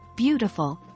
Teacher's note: in the word beautiful the primary stress is on the first syllable